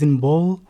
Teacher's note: when we produce the sound B, as in ball, the vocal folds are vibrating